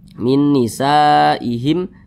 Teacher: apapun selain mim dan ba maka semua hukumnya namanya Izhar Syafawi karena dia izhar dibaca jelas tidak berdengung jadi baca pendek saja